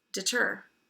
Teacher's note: In that case, it's not deter, so the accent is on the ter, on the second syllable. The open syllable D it tends to be a schwa.